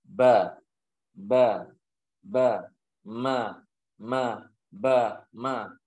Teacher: Termasuk huruf yang keluar dari bibir disertai dengan mengatupkan kedua bibir. Orang tidak bisa mengucapkan huruf ba dan huruf mim kecuali dengan mengatupkan kedua bibir.